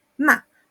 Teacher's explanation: Y el cuarto tono es cortito, parte arriba y baja.